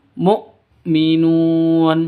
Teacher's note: Jadi jangan dibaca mu'minun tapi langsung mu'minun seperti itu. Nun panjang boleh 2, boleh 4, boleh 6 ketukan karena mad arid lisukun.